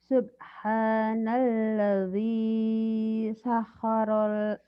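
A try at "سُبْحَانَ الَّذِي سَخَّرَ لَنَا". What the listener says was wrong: Kurang. Sakhara lana gitu. Sakhara lana. Sakhara lana. Kho-nya kurang keluar.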